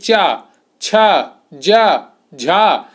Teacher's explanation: जीभ आपकी सीधी ऊपर तालू से लग रही है। जो मुंह के अंदर का ऊपर वाला हिस्सा होता है उसको तालू कहते हैं। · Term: तालव्य